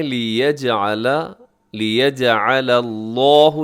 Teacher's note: لفظ اللہ موٹا رکھیے گا، اسے باریک نہ کیجیے گا